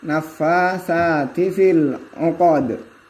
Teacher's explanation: Dalam lafaz uqad setelah huruf qaf ada dal, jika diwaqaf maka dalnya dibaca sukun. Hukum bacanya adalah qalqala